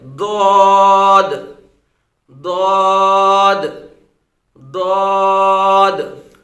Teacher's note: زبان کی جو کروٹ ہے، اس کو اوپر والے داروں کی جڑ کے ساتھ لگائیں گے